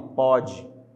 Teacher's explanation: Cuidado com esse pode, porque a gente pronuncia ele com timbre aberto.